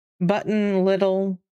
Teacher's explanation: it's a D sound instead of a T sound for little